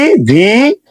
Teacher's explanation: উপরের দাঁত নিচের ঠোঁটের সাথে মিশে পড়তে হবে